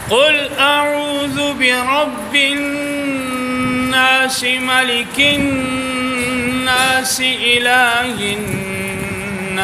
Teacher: تینوں آیات میں لفظ الناس میں نون پہ شد ہے تو غنہ کریں گے، اور مقدار غننے کی 1 برابر ہوگی.